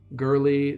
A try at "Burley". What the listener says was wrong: Yeah. Okay. Burley with a B.